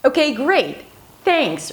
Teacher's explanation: Rising, falling and then rising intonation at the end.